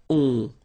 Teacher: you don't pronounce the final s, you get the on sound. Okay? Nasal in your nose, on.